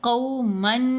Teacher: یہاں ہم نے قومن، میم 2 زبر من میں جو نون کی آواز ہے اس کو ناک میں چھپانا ہے اور ساتھ غنہ کرنا ہے